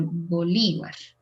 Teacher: And the accent is in the second syllable, Bolívar.